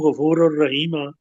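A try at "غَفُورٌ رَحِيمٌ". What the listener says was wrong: نہیں یہی را پہ دو زبر ہیں، غفور الرحیم،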